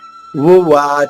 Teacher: ఉవాచ చూడండి ఉ వాచ అన్నప్పుడు పెదవులు కదా ఆ సున్నాల రావు కానీ ఉ పలకడానికి మాత్రం పెదవులు సున్నాలా మారుతాయి